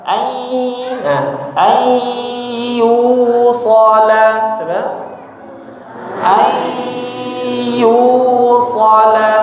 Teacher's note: Jadi mulutnya sudah di huruf ya atau huruf wau, tapi suaranya masih ada suara bunyi nun sukunnya, dengungnya